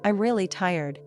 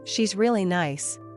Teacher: Listen closely to how the REA part becomes soft and quick.